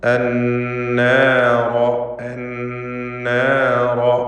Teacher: നൂൻ മുഷദ്ദദ, ശബ്ദം നൽകപ്പെട്ട നൂനിനെ മണിക്കണം. റാഇനെ തഫ്ഖീം ചെയ്ത് തടിപ്പിച്ചുച്ചരിക്കണം.